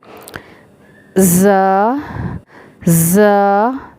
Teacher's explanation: زا سین دونوں میں سیٹی آئے گی اور اس میں باریکی بھی ہے · یہ جو آواز ہے یہ ساؤنڈ سیٹی کی ہے، یہ زا کی سیٹی ہے